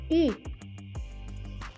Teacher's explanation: Nah, kalau yang ini nggak pakai K, jadi dia mulutnya membentuk huruf U, tapi yang dikeluarkan adalah bunyi I bersamaan.